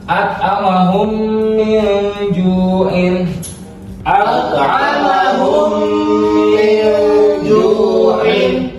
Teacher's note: karena mim sukun bertemu huruf mim, maka ada gunah sedikit, ada ditekan sedikit. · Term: idgham mimi